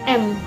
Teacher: yang dihasilkan dengan cara udara keluar melalui rongga hidung dengan menutup rongga mulut